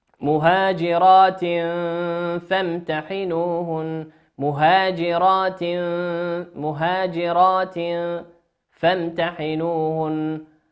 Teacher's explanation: تنوين في كلمة التاء في كلمة مهاجرات، تنوين أتى بعده حرف الفاء في كلمة فامتحنوهن، والفاء من حروف الإخفاء، فامتحنوهن، والنون مشددة في كلمة فامتحنوهن تغن بمقدار حركتين.